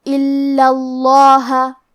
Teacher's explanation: ہمیں حرف اللام کو 2 حرف کے برابر پڑھنا ہے، کیونکہ تشدید کی اصلیت 2 حرف ہے · جیسا کہ یہاں حرف اللام ہے تو یہ 2 لام ہے، لام ساکن اور لام متحرک، اور کیونکہ تشدید زبر کا ہے لہذا ہمیں لفظ الجلالہ مطلب کلمت اللہ کے لام کو موٹی آواز میں پڑھنا ہے